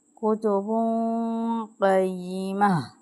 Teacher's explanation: تنوین کے بعد قوف آ رہا ہے تو ہم کیا کریں گے کہ اخفا کی صورت میں غنہ کریں گے